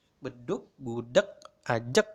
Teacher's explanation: Nah, ini sebetulnya pakai huruf G belakangnya. Tetapi secara tidak sadar kita lagi-lagi mengucapkan beduk seperti bunyi K, bukan bunyi G, bukan bedug.